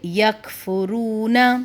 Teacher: کاف کی آواز باریک اور جھٹکے والی ہوتی ہے, جھٹکے والی جیسے کہ یکفرون.